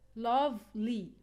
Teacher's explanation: we put the stress on the first syllable because we have a short e sound in the second syllable